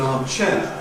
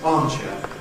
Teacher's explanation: The expected pattern of initial stress ˈarmchair is becoming more and more common